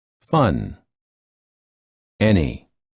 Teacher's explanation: the tip of the tongue touches the gum ridge and the sides of the tongue touch the upper teeth and the air flows out of the nose.